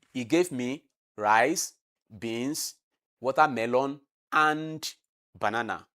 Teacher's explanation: When I say banana, it has come from high to low. That is falling tone.